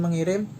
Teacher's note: Konsonan K diluluhkan menjadi nasal nge atau NG. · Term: Peluluhan fonem